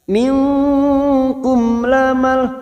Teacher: mim sukun bertemu lam Idhar syafawi mim sukun dibaca jelas